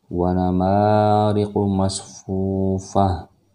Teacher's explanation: tamar butah berubah menjadi ha kalau di akhir kalimat